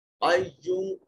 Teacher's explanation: ایوم قاف حرف مستعلیہ میں سے ہے، صفت استعلاء کی موجودگی سے مفخم پڑھا جائے گا. ایوم یہاں جب آپ وقف کرو گے تو میم پڑھا جائے گا، مگر میم کا اعراب نہیں پڑھا جائے گا